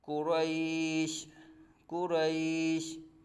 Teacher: یا ساکن سے پہلے زبر یا لین ہے تو حروف لین کے بعد شین عارضی سکون ہو رہا ہے تو یہاں بھی عارضی سکون ہوگا۔ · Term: مد لین عارض